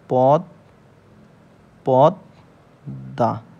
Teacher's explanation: তার মানে এই পদ্দার উচ্চারণটা কেমন হবে অর্থাৎ দীপ্ত উচ্চারণ হবে এই দ টা মোর সাথে যুক্ত অক্ষর অবস্থায় থাকার জন্য এই দ দুইবার উচ্চারণ হবে